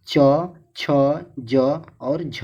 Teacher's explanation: हिंदी का तालव्य ध्वनियाँ च, छ, ज और झ है